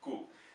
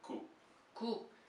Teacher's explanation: So first a G sound ending with a K sound.